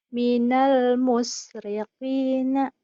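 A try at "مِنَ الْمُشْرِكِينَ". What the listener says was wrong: minal shinnya kurang meringis. Minal musyrikina. Diulang.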